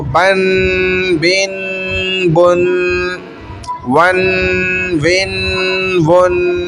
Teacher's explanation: یہ غنہ ہو رہا ہے ناک کے اندر، 2 تنوین کا غنہ ہو رہا ہے، کھینچ تھوڑی رہے، کھینچتے تو حرف کو نا، ہم تو ناک میں آواز کو روک رہے ہیں، حرف تو ختم ہو چکا ہے پیچھے، تنوین کا اس کا غنہ ناک میں ہو رہا ہے۔